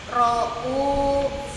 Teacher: Habis bunyi nun atau tanwinnya, langsung masuk ke huruf ro secara sempurna. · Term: idgham kamil